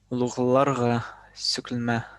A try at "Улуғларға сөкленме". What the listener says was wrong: Во, уже хорошо.